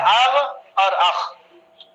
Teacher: غین خا کا مخرج اوپر گلے سے ہے